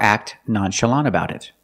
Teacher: The tongue goes up to make the T position, but you don't really hear it.